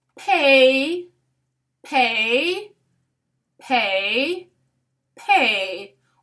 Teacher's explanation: we have a bilabial sound plus the diphthong A.